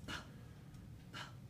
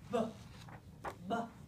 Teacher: the only difference between those two sounds in articulatory terms is their voice onset time